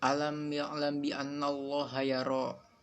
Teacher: Hukum bacaan ini terjadi apabila ada huruf mim mati bertemu dengan huruf ba, maka dibaca samar dan dengung. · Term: ikhfa syafawi